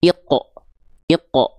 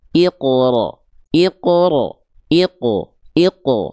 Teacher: Harusnya pantulannya tebal dan tidak tertahan.